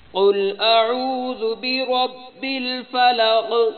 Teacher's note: اعوذ میں حمزہ اور عین کو علیحدہ علیحدہ کرنا ہے تاکہ حمزہ کی علیحدہ آواز ہو اور عین کی علیحدہ آواز ہو